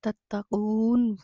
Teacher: واو مدہ ہے، کھینچ کے پڑھیں گے، نون کو ساکن کر کے وقف کر دیں گے۔ الذی جائے مدہ ہے، کھینچ کے پڑھیں گے۔